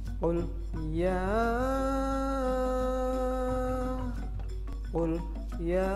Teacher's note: huruf ya itu panjangnya adalah sekitar 5 harokat atau ketukan ya. Jadi membacanya harus agak panjang. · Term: mad jaiz munfasil